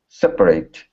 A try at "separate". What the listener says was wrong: Okay, give me a good R in the middle instead of separate. Separate.